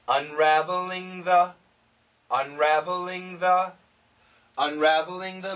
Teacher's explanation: the faster we say this the NG can cancel the th and it sounds like n